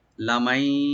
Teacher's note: নুন সাকিন এখানে ইয়ের সাথে মিলে এদগাম উইথ গুন্না হবে।